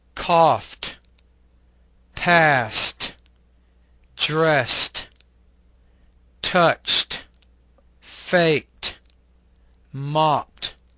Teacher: in words that end in voiceless consonants except for the T the e is pronounced as a t sound without creating an additional syllable